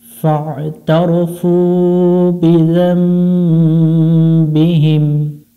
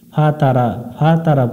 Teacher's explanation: এখানে অনেকজনে আমরা ভুল করি, ফা তারা পড়ি। আইনটা গলা চেপে উচ্চারণ করতে হবে, এখানে গলা চাপি না আমরা।